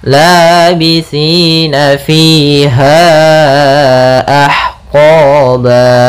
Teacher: Kemudian pada lafal qa di sini ada mad tabi'i, yaitu adanya fathah bertemu alif, kemudian ba mad iwad. Mad iwad terjadi ketika ada fathatain bertemu alif, dan dia ketika kita waqaf atau di akhir bacaan, panjangnya 2 harokat.